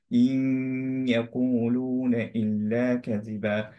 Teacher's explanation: Similarly এইখানেও ইন এবং ইয়া এই দুইটা মার্জ হয়ে গেল, কিন্তু আমরা পড়ছি ইয়াকুলু, রাইট? ইয়া হিসেবেই পড়লাম, কিন্তু নুনের যে ক্যারেক্টারিস্টিক্স একটা সেটা হচ্ছে আহ, গুণনা, সেটা থেকে গেল